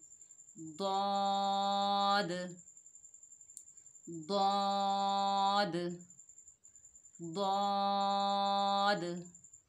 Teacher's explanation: दौद की अदायगी में ज़बान के किनारों को ऊपर वाली दाढ़ों से लगाएं और दौद भी मोटा हरूफ मुस्ताला में से है, इसे मोटा अदा करेंगे।